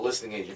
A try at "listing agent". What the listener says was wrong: Sound like listening. List agent. Listing agent.